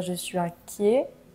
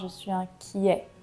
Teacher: au masculin on va dire je suis inquiet et au féminin je suis inquiette prononcer le t